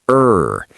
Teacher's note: In many languages, the R is tapped against the teeth or rolled in the throat. In American English, the tongue pulls back into the center of the mouth, not touching anything. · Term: American R sound